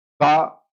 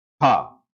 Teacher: तो खा की हवा ज्यादा लग रही है कि नहीं लग रही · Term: महाप्राण